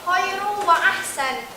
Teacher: idgham bigunah, yaitu dibacanya dengan memasukkannya dengan dengung